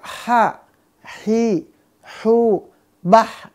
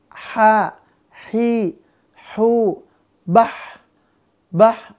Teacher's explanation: maka bisa kita pastikan pangkal lidahnya tidak terangkat ya pangkal lidahnya dia datar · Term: istifal